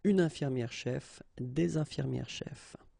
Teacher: this final S is not pronounced so clearly. If you only think about, the phonetical aspect of the thing, une infirmière-chef, des infirmières-chefs, the only difference will be here in the liaison, because actually you don't pronounce this final S here or here.